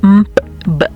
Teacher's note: está el punto bilabial, que básicamente es m, p, b.